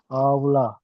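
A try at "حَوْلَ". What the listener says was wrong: হাউলা। হাউ যাওয়ার হাউ পড়েছেন, তাহলে হাবলা কি করে হচ্ছে? হাউ হাউ যাওয়ার হাউ হবে।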